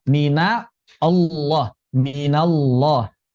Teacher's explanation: Yang tebalnya adalah lamnya. Di lafaz Allah itu yang tebalnya adalah lamnya bukan huruf yang berada sebelumnya. · di minallah maka nunnya jangan dibaca tebal. Tidak dibaca minallah, tapi mina Allah, minallah.